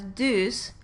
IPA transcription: dus